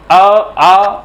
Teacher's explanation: तो कंठ का उच्चारण स्थान जो है वो है अ और आ का